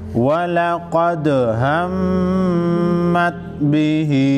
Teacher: मीम मुशद्दद पर गुन्ना होगा।